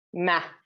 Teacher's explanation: And then that just goes right in the front. Even if it would be short, ma, it's quite a nasal sound